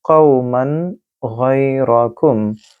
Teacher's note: اپنا غنہ نہیں کر سکتے، کیونکہ غین جو ہے وہ حروف اظہار میں سے ہے